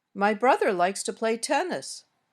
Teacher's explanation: the melody of this sentence my brother likes to play tennis my voice went up a little on brother then back down and up on tennis and finally down at the end